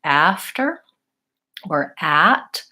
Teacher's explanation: with an open mouth and the tongue at the bottom so when I'm saying ah my mouth is the most open of all of the front vowels and I have to make sure that I'm using a relaxed